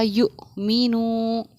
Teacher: حمزہ ساکنہ کے پڑھنے میں جھٹکا ہوتا ہے،